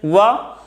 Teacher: वा के उच्चारण स्थान में दांत का भी उपयोग होता है, दांत में भी जीभ टच करती है वा, और ओठ का भी प्रयास होता है, ओठ भी एफर्ट करते हैं। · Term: दंत प्लस ओष्ठ